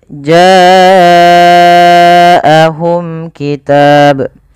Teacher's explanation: Pada lafal bacaan ja'ahum ini wajib kita panjangkan sepanjang 4 atau 5 harakat. Kenapa? Karena ia ada bacaan yang dinamakan dengan mad wajib muttasil.